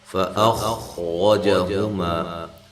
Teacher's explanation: فَأَخْرَجَهُمَا، یہاں بھی حمزہ تحقیق کے ساتھ خا کو موٹا، خا موٹی ادا کرنی ہے اور ہلانا نہیں ہے۔